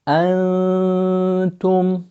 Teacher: so you stay slightly longer on the noon. Then you have the ta, pushing it out, tu, and then back for the meme because it has sukoon in it.